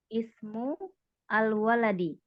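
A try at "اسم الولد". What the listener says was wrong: Ya, ismul waladi. Ya, dibaca jangan terpisah ya.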